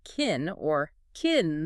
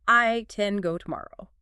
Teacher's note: In a normal, flowing, conversational sentence, can is usually unstressed. Americans will reduce the vowel so drastically that it almost disappears.